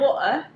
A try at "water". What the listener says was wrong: It's water. It's water. There's no tea in it. It's water.